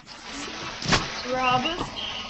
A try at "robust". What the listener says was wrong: The first word is not robust, but robust. Second syllable. Second syllable.